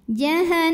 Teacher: Cara bacanya dengung, bunyi n-nya tahan sampai ada suara masuk hidung. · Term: gunnah musyaddadah